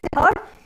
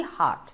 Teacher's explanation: So hurt, when I say hurt, is it a long vowel sound or a short? It is a short vowel sound, right? But when I talk about the word heart, it is a long vowel sound. So it should never be hurt, it has to be heart.